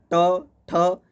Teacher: मूर्धन्य यानी यहीं से जो तालु से है वही, जैसे ट क्या चीज़ होता है, ट, ठ, इसमें जीभ उलट जाता है, मूर्धन्य के रूप में यह प्रयोग होता है